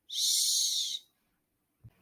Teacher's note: Your tip of the tongue is not going to touch anything, but you'll notice that front mid portion of your tongue is going to elevate toward the roof of your mouth. You're going to release the air through your mouth without turning on your voice. So the SH sound is an unvoiced sound.